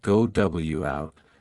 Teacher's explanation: in a vowel sound and the next starts with a vowel native speakers often add a slight Glide like a w or Y sound to link them smoothly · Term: vowel to vowel linking